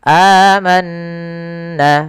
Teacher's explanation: Kalau di sini hamzah bertemu dengan atau fathah bertemu dengan alif, maka ini kita namakan dengan mad badal. Panjangnya untuk mad badal sendiri dalam riwayat Imam Hafz An-Asim adalah dua harakat.